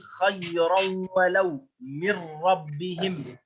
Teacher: الثاني إدغام بغير غنة، لا يوجد غنة في هذا الإدغام